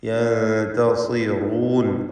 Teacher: സ്വാദ് തഫ്ഖീം ചെയ്ത് ഉച്ചരിക്കണം. കസ്റ ആയതുകൊണ്ട് കുറഞ്ഞ തഫ്ഖീം. യൻതസിറൂൻ, റാഇന് തഫ്ഖീം കൊടുക്കുകയും വേണം, തടിപ്പിക്കണം.